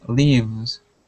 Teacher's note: we go from that V to a Z sound